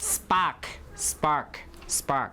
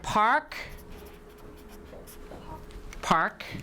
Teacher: p will turn into unaspirated p when it occurs after an s